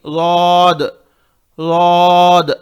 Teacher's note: ضاد ضاد اس میں ضا ایسا آواز نہیں آنا، ضا یہ غلط ہے. ضاد زیڈ کی آواز آنا، لیکن تھوڑی اور موٹا رہنا